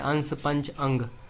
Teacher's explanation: इसके उच्चारण में नाक से अधिक सांस निकलती है, अनुस्वार में और मुख से कम · इसका उच्चारण आगे आने वाले व्यंजनों से प्रभावित होता है